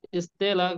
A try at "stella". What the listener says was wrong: স্টেল্লা, স্টেলা না, স্টেল্লা, এখানে স্টেল, এরপরে হচ্ছে লা, স্টেল্লা।